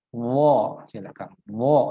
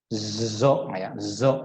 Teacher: Bisa kita lihat pada posisi lidah bagian belakang atau pangkal lidahnya menaik ke langit-langit mulut bagian belakang, ya. Sehingga bunyinya harus tebal. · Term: huruf dha